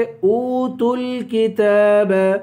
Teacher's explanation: کاف کو ایک الف کے برابر کھینچیں گے